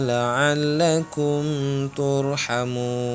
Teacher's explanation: cara membacanya panjangnya 2 atau 4 atau 6 harokat karena hukum bacaannya adalah mad arid lisukun.